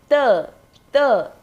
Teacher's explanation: जो हमारी जिह्वा है, जीभ है, वो दांतों को छूती है